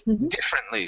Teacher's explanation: stress at the beginning